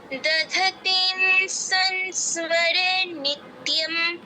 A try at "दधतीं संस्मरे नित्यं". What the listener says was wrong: অনুস্বারের উচ্চারণ ভুল হলো, দধতিং অনুস্বার এর মতো, আর সং সং দুটোর ক্ষেত্রেই বাংলা অনুস্বারের মতো উচ্চারণ।